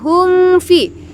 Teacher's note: itu mim mati bertemu dengan Fa itu disebut dengan izhar syafawi Jadi kalau izhar syafawi ini dibaca jelas gitu ya tidak ada dengung gitu ya